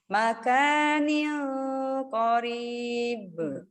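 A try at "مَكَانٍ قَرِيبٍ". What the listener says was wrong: Cuman tapi tadi agak renggang awalnya bibirnya, jadi nggak close gitu. Nah, terus lama-lama berubah jadi apa gitu yang nggak paham gimana cara bacanya.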